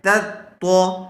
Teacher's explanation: تا باریک پڑھا جائے گا اور طا پر کر کے